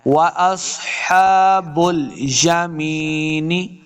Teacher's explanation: یہ یا مد ہے اس کو 2 حرکات لمبا کرنا ہے